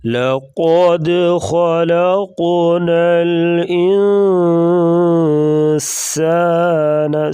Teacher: سین سیٹی جیسی آواز نکالیں گے